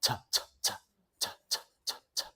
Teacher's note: t, t, t, does not vocalize, does not vibrate.